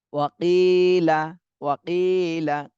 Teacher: কিতেও এক আলিফ টান দিতে হবে, জেরের বামে জজমালা ইয়া মদের হরফ।